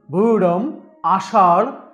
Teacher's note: র এর উচ্চারণ ভূরম, আষাঢ় শব্দের র এর মতো তালুতে